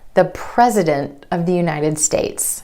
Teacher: that T is held after the N in the NT cluster. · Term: held T